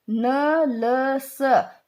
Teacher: न, ल, स ये वत्स्य, वत्स्य का मतलब होता है मसूड़े। इसमें जो है जो जीभ है मसूड़ों से टकराती है